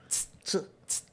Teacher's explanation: O TS em japonês é uma sílaba só, é uma emissão de voz só.